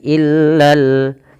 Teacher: Lam kedua dibaca dengan jelas karena di sini ada alif lam qamariah, yaitu alif lam yang ditulis dan dibaca dengan jelas.